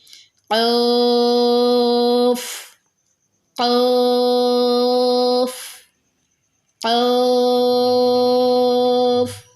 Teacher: زبان کی جڑ جب اوپر تالو کو لگے، اس سے قوف ادا ہوتا ہے